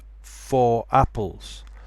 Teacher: So it sounds like you're saying rapples.